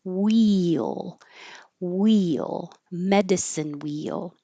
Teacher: I wrote it like two, but it's just blended together. Very high for the E and then sliding down and back up for the L. · Wheel is that weird situation where you're almost making two syllables. I wrote it like two, but it's just blended together.